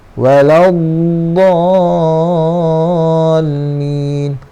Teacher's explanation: Dha di sini panjang dia 6 harakat. Ma' lazim kalimi musaqqal.